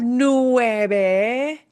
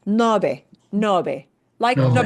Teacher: Instead of nueve, it changes that nue of nueve into no, a shorter thing to say.